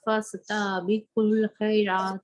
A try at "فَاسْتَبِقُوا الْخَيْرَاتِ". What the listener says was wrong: تا کو لمبا نہیں کریں.